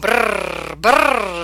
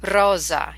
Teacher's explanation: the trilling happens behind your front teeth, so we'll be practicing this. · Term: trilling R